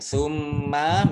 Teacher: mim tasdid dibaca gunnah atau mendengung ditahan 2 harokat